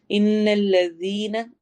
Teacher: इन्ना में नून गुन्ना करना है, इन लंबा करके।